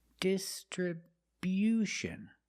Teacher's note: We move the stress to the first and third syllables.